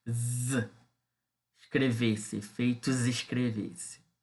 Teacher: Na leitura, na oralização, o S, né, ele acaba se tornando, né, acaba se sonorizando, né? Acaba se tornando uma sibilante, né? Z, escrever-se, efeitos escrever-se, né? Uma sibilante sonora, né? E não surda.